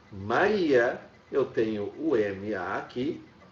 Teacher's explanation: Agora o I é mais forte que o A. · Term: vogal mais forte